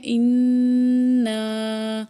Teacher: فعزز، نون الف زبر نا، فعززنا، با زیر بی، سا الف زبر سا، لام زیر لی، سا دو زیر سن، بی سا لی سن، فا زبر فا، قاف الف زبر قا، لام پیش واو، مدلو، فقالو، حمزہ زیر نون، ان، نون الف مد زبر نا، اننا، یہاں نون پہ شد بھی ہے اور حمزہ کے اوپر مد ہے، اس لیے اس کو ہم کھینچ کے پڑھیں گے